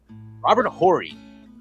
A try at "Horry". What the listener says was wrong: Yeah, except his name is Ori, not Horry. The H is silent.